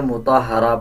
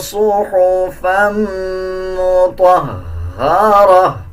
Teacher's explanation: اب اکثر لوگ اس میں یہ غلطی کرتے ہیں، مطہرہ پڑھ دیتے ہیں، اس طرح نہیں پڑھنا، بلکہ ہا کے اوپر شد ہے، ہا کو مضبوطی کے ساتھ ادا کیا جائے گا